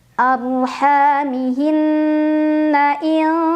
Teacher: Arhamihinna in, ada ikhfa ab'ad karena ada nun sukun bertemu dengan huruf kaf. Cara membaca nun sukunnya dibunyikan samar-samar menuju huruf kaf sambil dengung. Dengungannya lebih besar dibandingkan dengan kesamarannya.